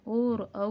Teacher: ओ और औ जो वर्ण है वो कंठोष्ठ से बोले जाते हैं